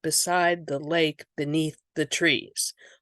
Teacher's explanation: the thes are the soft syllables, and beside and beneath and lake and trees are getting the emphasis